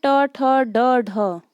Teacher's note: ड का उच्चारण स्थान है मूर्धा